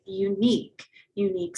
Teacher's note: starts with the u but clearly has a y sound unique so we would say a unique girl not an unique